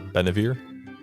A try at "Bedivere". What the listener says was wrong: Bedivere. No, it's B-E-D. No, not B-E-N, B-E-D.